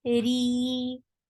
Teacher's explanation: Ra is light here because whenever ra is with kasra, it is light.